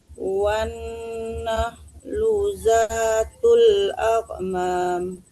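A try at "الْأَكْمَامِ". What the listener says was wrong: Jangan akmam, ada hamasnya sedikit ya. Akmam, ada nafas keluar dari tenggorokan. Akmam.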